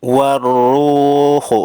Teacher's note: Warruhu, ru dibaca panjang, mad tabi'i, cirinya ada waw sukun, sebelumnya berharokat dhammah.